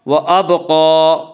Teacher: جب ان حروف کے پر جزم آئے تو ان کو پڑھتے وقت ان کے مخرج ٹکر کھا کر الگ ہو جاتے ہیں۔ وابقا، قاف کو پر پڑھیں گے، قاف حروف مستعلیہ میں سے ہے، حروف مستعلیہ 7 ہیں جن کا مجموعہ خصہ ضغط تنقیض ہے جو ہمیشہ ہر حال میں پر پڑھے جاتے ہیں۔